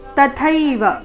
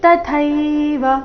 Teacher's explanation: ತ ಅಲ್ಪಪ್ರಾಣ ಮುಂದೆ ಥೈ ಮಹಾಪ್ರಾಣ ದೀರ್ಘ